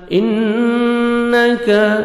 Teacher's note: नून मुशद्दद गुन्ना करेंगे, काफ को बारीक पढ़ेंगे